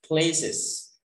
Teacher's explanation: Place itu kurang es ujungnya